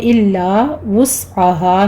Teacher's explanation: سین پر ہمس ہوگا سیٹی کی آواز کے ساتھ